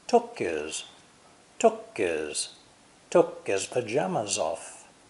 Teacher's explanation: And as we saw before, his has no H sound.